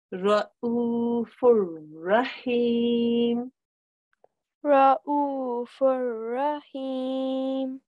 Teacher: When you see a tanween and after it's a ra, then you make no nasal sound.